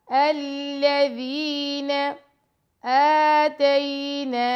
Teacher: حمزہ پہ کھڑا زبر ہے، نون پہ بھی، ان دونوں کو 2 سیکنڈ کا ٹائم دیں گے